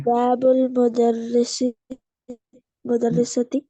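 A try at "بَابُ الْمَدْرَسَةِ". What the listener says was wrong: मुदर, मुदर, मुदरिस तो नहीं है, ये तो मद है। मदरसती, ये आपने बाबर साइज को पढ़ना है। बाबुल मदरसती।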